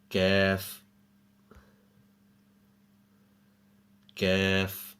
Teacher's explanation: Kaf is pronounced by raising the back end of the tongue touching the palate, similar to Qaf, but a little further forward on the tongue.